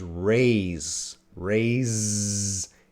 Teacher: although the consonant is s it's making a Z or Zed sound